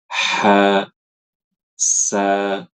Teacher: Hammas mudahnya dipahami adalah ketika huruf itu dilafalkan itu lebih dominan udara ketimbang suara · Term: sifat haas